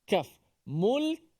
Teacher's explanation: Huruf kaf tu hanya bunyikan dia punya sifat hamasnya dan juga tertahan suara.